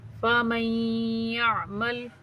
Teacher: میم کو یا کے ساتھ ملا کے میم کا یا میں ادغام کریں گے، ٹھیک ہے، غنہ کے ساتھ رک کر.